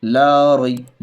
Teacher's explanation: یا لین کو نرم آواز کے ساتھ جلدی پڑھیں گے، معروف پڑھیں گے ، نون، نون میں زبر اور پھر یا میں ساکن، یا